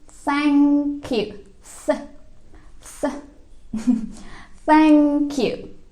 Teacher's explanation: ujung lidahnya itu agak digigit terus dikasih hembusan nafas